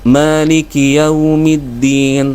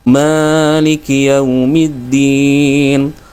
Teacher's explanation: agak panjang huruf mimnya yang semestinya dua ketukan. Maliki Yaumiddin, tapi di sini dia bacanya Maliki Yaumiddin.